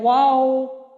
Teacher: گول تو کرتے ہیں لیکن مکمل ملاتے نہیں ہیں، کیونکہ دیکھیں گول دائرہ بیچ میں رہ جاتا ہے واو، تو اس لیے ہمارے پورے جو دونوں ہونٹ ہیں وہ بند نہیں ہوتے گول ہو کے، درمیان سے ہمارا واو ادا